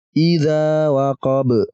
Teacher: Idza dibaca panjang 2 harokat